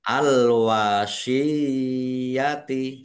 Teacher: Ya tasdid yang didahului dengan harokat kasroh mat tamkin